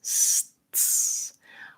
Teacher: it's really just a sequence of moving from S, stopping the air for the T, and going back to the S